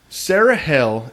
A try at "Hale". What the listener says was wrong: Hale. Not hell.